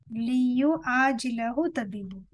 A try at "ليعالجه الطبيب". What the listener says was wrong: Liyu alijahu. Not jilahu. Liyu alijahu tabibu.